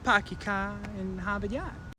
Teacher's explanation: they don't pronounce their Rs at the end of syllables